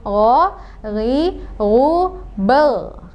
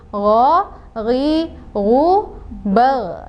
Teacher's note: Nah, itu salah, itu kurang tepat. Karena huruf gho ini bukan termasuk huruf qalqalah, tidak boleh dipantulkan. Maka bacanya adalah gho, ri, ru, bal.